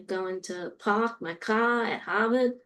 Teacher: if you are from the Boston area, you drop your R's and you produce a vowel. So you say, going to park my car at Harvard.